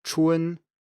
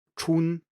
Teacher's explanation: the final spelled u n which is actually pronounced u e n